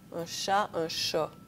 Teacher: la postériorisation du A dans les syllabes ouvertes à la fin d'un mot